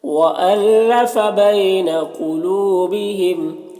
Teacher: وَأَلَّفَ بَيْنَ قُلُوبِهِمْ، لو میں واولین سے نرم آواز کے ساتھ جلد پڑھیں گے، نون میں یہاں پر اخفا ہو رہا ہے، اور قاف حروف مستعلیہ میں سے پر پڑھیں گے، اور حروف قلقلہ میں سے بھی ہے تو قلقلہ بھی کریں گے۔